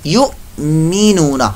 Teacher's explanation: आगे पढ़ते हैं अल्ला अल्ला दीना दीना युमीनूना यू, यहाँ पर हम झटका देंगे युमीनूना, हमजा साकिना आने की वजह से हमने यहाँ पर झटका दिया